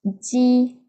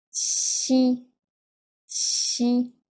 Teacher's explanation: Читается Чи, Чи. Это у нас Ди, более звонкая. Это Чи. Чи.